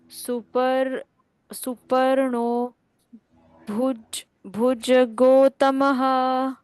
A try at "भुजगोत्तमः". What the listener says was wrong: गो के बाद डबल त है, इसलिए जोर लगाकर पढ़ना है। भुजगोत्तमः ऐसे।